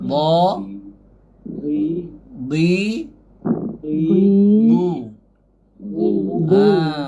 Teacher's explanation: Dia tak ada angin huruf dha ni. Huruf dha ni dia tak berangin. Dia jahar.